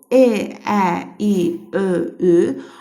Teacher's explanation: Bu saitləri səsləndirərkən isə dilimiz önə doğru gəlir. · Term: İncə saitlər